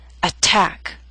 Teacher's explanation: stressed syllables let me help you understand through these three examples attack is a word with two syllables stress is on the second attack so T although in the middle of the word is